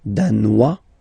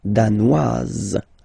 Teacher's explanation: Danois, don't pronounce the final S. Danoise, here you pronounce it.